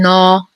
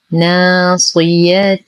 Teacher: لدينا ألف ساكنة ما قبلها مفتوح فهو الطبيعي بمقدار حركتين مع ترقيق الألف لأن ما قبلها مرقق